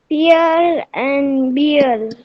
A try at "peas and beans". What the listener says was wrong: पियर नहीं है बेटा, पीज और बीन्स है, पीज और बीन्स।